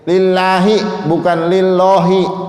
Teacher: lafaz Allah yang dibaca tipis